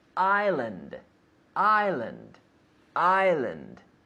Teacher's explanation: there is an S but we don't pronounce it